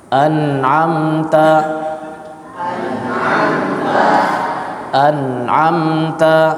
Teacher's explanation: Diberikan ghunah sedikit karena sifatnya ghunah. Jadi ada ghunahnya tapi sedikit. · Di sini mimnya dialirkan karena sifat tawassud. Diberikan gunnah sedikit karena sifatnya gunnah. Jadi ada gunnahnya tapi sedikit, sama seperti pembahasan izhar pada ahkamun nun sakinati wa tanwin.